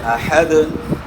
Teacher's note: دال جو ہے حروف قلقلہ میں سے ہے، دال ساکن ہو جائے گا تو دال میں آپ نے قلقلہ کرنا ہے ، یعنی اس طرح نہیں پڑھنا، احد نہیں پڑھنا، احد وقف